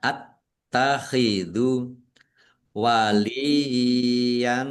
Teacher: Taknya dibaca double, ada tasdidnya. Ditekan dan ditahan biar tampak doublenya.